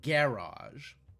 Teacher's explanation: I have heard garage as two syllables with an accent on the first syllable